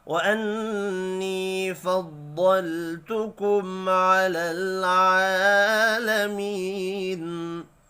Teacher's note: نون مشدد پر غنہ کریں گے